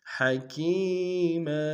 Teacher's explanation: علیما حکیما، حق گہرائی سے ادا کریں گے، کاف یا مدہ ایک جانب کھینچیں گے، میم کے تنوین غنہ کریں گے، وقف میں میم کو الف سے بدل دیں گے